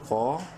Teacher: وجنودہ، قوف الف زبر قو، قوف کو منہ بھر کے پڑھتے ہوئے ایک الف کے برابر لمبا کریں گے الف مدہ کی وجہ سے۔